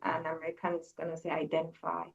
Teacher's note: that T most Americans um when it's in the middle of the word, it's not pronounced. It's it's kind of swallow.